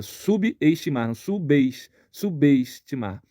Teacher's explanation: o som do B do prefixo sub ele se liga ao som do e que está iniciando uma sílaba esse B se liga o e para ajudar a manter o